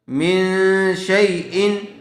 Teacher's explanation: نون ساکن کے بعد حروف اخفا میں سے شین آیا ہوا ہے، اسے غنّے کے ساتھ اخفا ہوگا